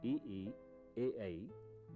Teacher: स्वर ई, ए, ऐ जिह्वा के अगले भाग या अग्र भाग से उच्चरित होते हैं